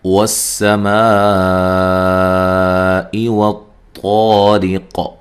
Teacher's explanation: والسماء والطارق، واو کو ادا کرتے ہوئے دونوں ہونٹوں کو گول کرنا ہے، سین کو باریک سیٹی سے ادا کرنا ہے، اور میم ما جو میم پہ جو مد اور یہ مد واجب ہے، الف مدہ کے بعد حمزہ اسی کلمہ میں ہے، ٹھیک ہے۔